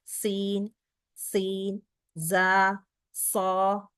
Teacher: നാവിന്റെ അറ്റം താഴെ രണ്ട് മുൻപല്ലുകളുടെ ബാക്ക് സൈഡിലാണ് ടച്ച് ചെയ്യുന്നത് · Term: ഹുറൂഫ് സഫീർ